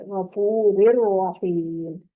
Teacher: من غفور الرحیم، غفور رحیم نہیں پڑھا جائے گا بلکہ را کی جو آواز ہے اگلی را میں داخل ہو جائے گی